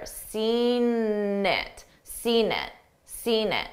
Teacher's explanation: I use that N sound to connect the two words together.